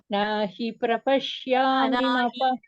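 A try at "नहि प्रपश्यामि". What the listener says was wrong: No. Nahi, no. He is short. Nahi, hip should come. Nahi prapashyami mama panudyat. Hip, hip. I should hear one extra hip sound.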